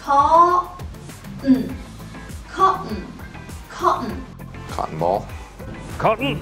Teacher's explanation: اقول حرف ال T اللي بقلبه همزة